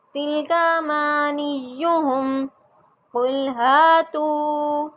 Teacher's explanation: تو کو دیکھیں میں لمبا کر رہی ہوں، ہا کو بھی لمبا کروں گی کیا الف مدہ ہے، تو کیا ہے واو مدہ ہے.